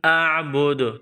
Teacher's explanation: silent کریں گے، یہاں دال ہے، یہ حروف قلقلہ ہے، اور دال جب ساکن ہوگا تو اس کو قلقلہ کریں گے